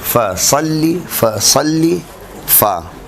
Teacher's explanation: فرماتے ہیں کہ نچلے ہونٹ کے اندرونی حصے، نچلے ہونٹ کے اندرونی حصے سے، اب یہاں اصطلاحی لکھنا پڑے گی، ثنایا علیا کے کنارے ٹکرائیں اور آواز ہوا کے ساتھ خارج ہو